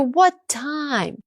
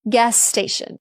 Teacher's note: This linking happens in lots of little ways. If two words both have the same sound, Americans don't repeat it. They just stretch it.